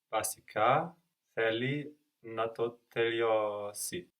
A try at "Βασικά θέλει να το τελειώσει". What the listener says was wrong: Good, but be careful not to carry over that b from English. Βασικά θέλει να το τελειώσει.